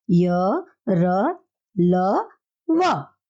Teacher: अंतस्थ का अर्थ होता है स्वर और व्यंजन के बीच में स्थित में इनके जो उच्चारण जीभ और तालु, दांत और ओठों के आने से होता है, किंतु श्वास में रुकावट कम होती है। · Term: अंतस्थ व्यंजन